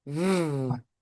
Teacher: V is the voiced version of the F, which is the same shape just unvoiced.